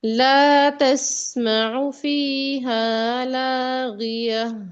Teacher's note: تسمعو لمبا نہیں ہے، آئین کو بغیر کھینچے پڑھنا ہے